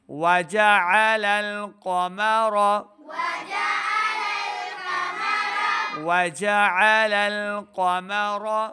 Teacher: لام کو آگے لام کے ساتھ ملانا ہے۔ وجعل آل نہیں کرا، آل حمزہ کی آواز ہے، عین کو صحیح تلفظ کے ساتھ پڑھنا ہے۔